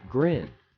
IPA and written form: ɡrɪn (grin)